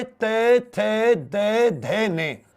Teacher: ये पांचों दांतों से होते हैं